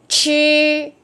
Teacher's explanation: Còn âm này là CH, CH là phải uốn lưỡi đó. Mạnh hơi, vừa uốn lưỡi vừa bật hơi.